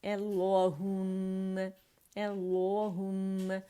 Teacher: اقص الحلق سے ادا ہو رہا ہے حمزہ باریک پڑھا جائے گا، او نہیں پڑھا جائے گا